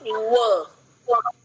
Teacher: आपने अपने दोनों ओष्ठ का किया जी, लेकिन दांत कहीं नहीं लगता है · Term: शुद्ध ओष्ठ्य